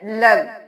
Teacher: लाम 2 बार अदा होगा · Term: तशदीद